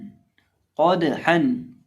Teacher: क़ाफ को मोटा करके पढ़ेंगे और दाल को हिलाकर पढ़ेंगे, दाल को कलकला करेंगे क्योंकि ये हरूफ कलकला में से है।